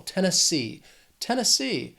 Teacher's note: Moving right along, we have Tennessee. This state has 3 syllables and the stress is on that third syllable, that final syllable